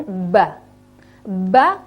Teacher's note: Mba itu sama-sama di dua bibirnya yaitu saling merapat